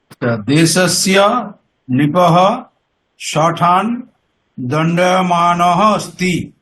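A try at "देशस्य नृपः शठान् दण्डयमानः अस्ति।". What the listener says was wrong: খুব ভালো।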